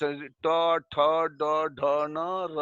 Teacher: जीभ को ऊपर की तरफ मोड़ दो और ऊपर जहाँ जीभ सटता है उसको हम मूर्धा कहते हैं। तो उस ट ठ ड ढ न र और मूर्धन्य स, इनका उच्चारण मूर्धा से होता है, तो इन्हें मूर्धन्य वर्ण कहते हैं।